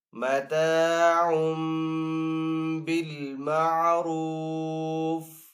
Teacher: وقف کرنے کی صورت میں فا کو یہاں پہ ساکن کریں گے · یہاں پہ ڈبل پیش ہے، ڈبل پیش کو تنوین کہتے ہیں، تنوین کے بعد آگے با ہے تو یہاں پہ تنوین کو میم سے بدل کر پڑھیں گے یعنی کہ غنہ کر کے پڑھیں گے ، را کو یہاں پہ پر پڑھیں گے، آگے پھر طا